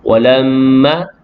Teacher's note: Mim yang sabdu wajibul gunnah, wajib dengan sekadar 2 harakat